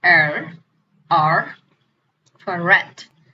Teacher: So the next one is post alveolar. It is when the tip of the tongue meets the rear part of alveolar ridge. So it's produced sound r, r for rat.